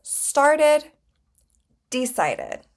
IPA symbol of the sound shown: ɪd